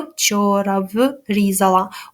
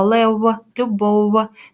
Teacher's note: в близький до голосного у проте він не утворює склад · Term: у нескладовий